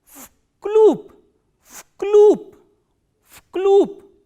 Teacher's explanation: because this v is voiced, so it will be pronounced as its voiceless counterpart, which is f